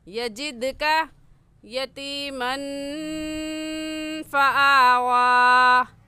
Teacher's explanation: یجد کا میں دال حروف قلقلہ میں سے ہے، تو اس وجہ سے اس پر قلقلہ کریں گے